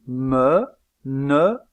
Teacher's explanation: il y a blocage de l'air au moyen de la pointe de la langue derrière les incisives supérieures aussi appelle-t-on cette occlusive une occlusive appicodentale vous vous souvenez que · dans le cas de l'occlusive me il y a blocage de l'air au niveau des deux lèvres aussi appelle-t-on cette occlusive une occlusive bilabiale dans le cas de